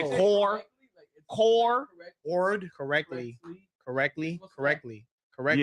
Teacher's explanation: Yeah, you completely took out the T.